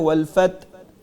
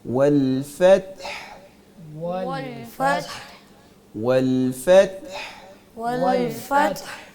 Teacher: والفتح آخر میں دو ساکن حروف اکٹھے آ رہے ہیں، ایک تا تو جو آلریڈی ساکن ہے اور ہا کو ہم نے وقف کی وجہ سے ساکن کیا ہے، تو دونوں کی آواز کو ہم نے ظاہر کرنا ہے، تا کو بھی ہا کو بھی